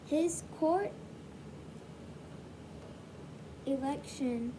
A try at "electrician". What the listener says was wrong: Not election. You took out a syllable. Electrician.